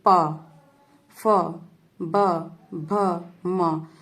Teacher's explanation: दोनों होठ के आपस में टकराते हैं और अंदर की हवा जो है वो बाहर नहीं निकल पाती है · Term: ओष्ठ व्यंजन